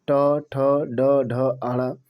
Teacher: ट वर्ग मूर्धन्य होते हैं, जो बीचों बीच से बोले जाते हैं।